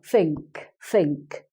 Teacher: But a Cockney person may not use the th. They will use an F sound or a V sound instead. So the word think, I think, they would say instead of think, they would say it like that, think, and the top teeth are on the bottom lip, think.